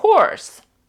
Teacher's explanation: в нас є звук О Довгий чуть-чуть ми зачіпаємо звук а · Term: довгий звук о